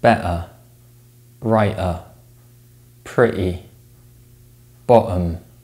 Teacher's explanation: accents prefer to gloize the sound in this position which means the air is stopped in the throat instead of the mouth